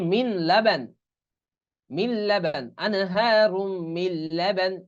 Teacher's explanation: এই নুন উচ্চারণ হবে না, বরং মিম লাম জের মিল